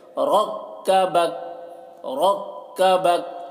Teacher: یہ دونوں کاف کو باریک پڑھنا ہے اور قلقلہ نہیں کرنا ہے